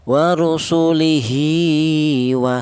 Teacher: Setelah hair tidak berjumpa dengan hamzah. Ini namanya masalah qasirah. Yaitu panjangnya satu alif atau dua harakat atau dua ketukan.